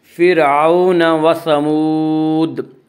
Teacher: وہ واو جو ساکن اس سے پہلے زبر ہو، واولین کو نرم آواز کے ساتھ پڑھیں گے۔